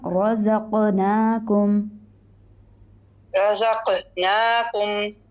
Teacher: قاف کو موٹا کیجیے، قلقلہ بھی ہوگا